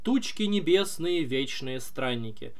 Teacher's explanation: Тучки не, вот у нас стопа начинается вот так вот. Ударение на первый слог, это дактиль.